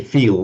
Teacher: the Americans say feel, so with a distinct dark L at the end